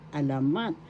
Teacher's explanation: The accent is in the third syllable alamat.